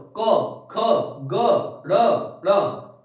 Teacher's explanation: कहां से आवाज आ रही है? कंठ से आ रही है ना, तो इसीलिए इनको बोलते हैं हम कौन सी? कंठ ध्वनि, या कंठ व्यंजन भी बोल सकते हैं।